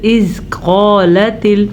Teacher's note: زا را زا جو ہوتے ہیں نا، جیسے یہ را ہے اس کے ساتھ زا ہوتا ہے، وہ سختی سے پڑھا جاتا ہے، جبکہ زال نرمی کے ساتھ پڑھا جاتا ہے۔ تو از قالت قاف کو موٹا پڑھنا ہے، الف مدہ کے ساتھ پڑھنا ہے